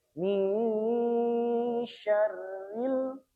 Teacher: Sambil kita mendengungkan bunyi nun sukunnya, lidah kita sudah mempersiapkan untuk membaca makhraj dari huruf shin. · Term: ikhfa